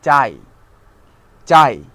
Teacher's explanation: আ এবং ই মিলে হয় আই, অর্থাৎ এখানে আই এবং ই একসাথে উচ্চারিত হয়। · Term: যৌগিক স্বর